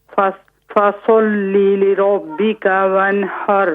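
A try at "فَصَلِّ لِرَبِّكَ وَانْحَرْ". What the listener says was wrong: صاد کو موٹا کیجئے، لام کو موٹا نہ کیجئے. فصلی لربک.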